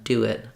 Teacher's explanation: no break between the vowels just naturally Glide them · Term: vowel to vowel linking